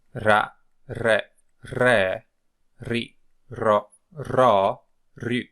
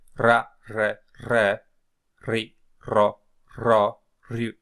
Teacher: This word here that looks like a P, so it can be misleading at the beginning, is the Greek R, but it's not pronounced exactly as the English R. It's pronounced more like an Italian R because it's the rolled R.